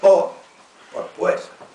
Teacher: Castellano antiguo el ditongo ue se transforma en o como en po por pues